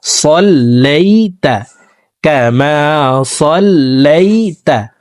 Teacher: ওয়া আলা আলি মুহাম্মাদ, ওয়া আলা আলি মুহাম্মাদ কামা সাল্লাইতা, এখানে কামা সাল্লাইতা পড়া যাবে না, সিন উচ্চারণ করা যাবে না, সদ হরফকে মোটাভাবে পড়তে হবে